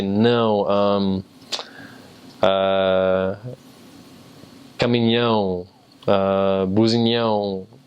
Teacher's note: it would sound like you're saying noun, but like through your nose completely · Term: very nasal sound